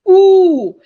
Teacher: is a back high rounded long vowel